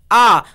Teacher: आपने मुंह खोला इसका उच्चारण हो गया जीव में कोई गतिविधि नहीं हुई · मध्य स्वर जिन स्वरों के उच्चारण में जीवा समान अवस्था में रहती है यानी ना हिल्टी है ना ती मध्य स्वर कहलाते हैं आ